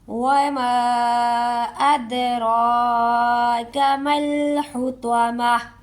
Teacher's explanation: اور اس پر ہم لوگوں نے یہ توجہ بھی کرنی ہے کہ دال ہے، دال پر کلکلا ہوگا، ٹھیک ہے۔ دال کو آواز جنبش کے ساتھ ادا کرتے ہوئے ہم اس ورڈ کو ادا کریں گے، ہلاتے ہوئے، لہراتے ہوئے۔